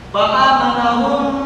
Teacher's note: mim ketemu mim, idgham mim lagi, ditahan 2 harokat